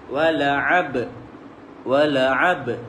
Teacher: Pastikan ada betul-betul huruf ba tu berlantun.